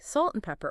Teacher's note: even and can shrink right down to just an N sound, especially between two nouns.